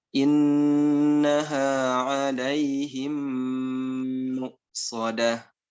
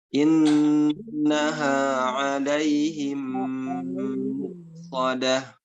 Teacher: Idgham mimi wajib gunnah selama 2 harokat.